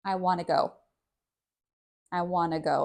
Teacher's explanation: it sounds more like just the N sound. And the T is taken out altogether